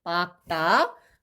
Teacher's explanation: 원래 리을 기역은 기역으로 발음됩니다